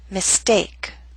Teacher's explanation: with the st we do not have a strong puff of air · Attack, between, eternal, Italian, mistake. Note with the ST we do not have the strong puff of air. Again, mistake.